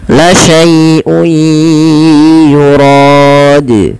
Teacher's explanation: Cara membacanya adalah kita memasukkan tanwinnya pada lafal un ketemu masukkan kepada huruf ya sehingga suara nun sukunnya hilang. Kan awalnya laaiun ada nun dimatikan ketemu ya langsung ke ya la syai. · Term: idgham bighunah